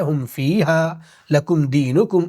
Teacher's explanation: یہاں پہ میم کی آواز کو ظاہر کر کے پڑھیں گے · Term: اظہار شفوی